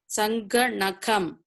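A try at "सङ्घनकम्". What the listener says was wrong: You are reading Sangha Nakam, that is wrong. Then you are saying Nakam, that is wrong. It is Sa. It is a short vowel A. Sangha, it is A. Na is A, not Na. It is Na. If it is Na, this will look like this. If it is Sangha Nakam, then it Sanghanakam will look like this. The important thing to be noted is you cannot stretch the vowel unnecessarily.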